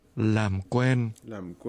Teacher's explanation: This is pronounced with a low, falling, and a mid-level tone.